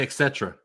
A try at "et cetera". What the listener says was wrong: Not etc. There's no K in it. Don't say etc. The faster you say it, you're adding and removing letters all at the same time.